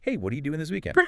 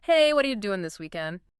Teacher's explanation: what are you connects and reduces towards what are ya? The T often flaps to a D. The D links with Y to make G, vowels reduce.